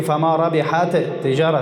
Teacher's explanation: دو حرف را یک حرف نطق میکنم مثل دوم مشدد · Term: ادغام